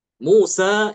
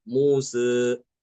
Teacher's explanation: bukan fathah tapi geser sedikit ke arah ke arah kasrah tapi hanya sedikit aja masih lebih mirip ke fathah gitu. Ini namanya imalah sugra, imalah kecil ya.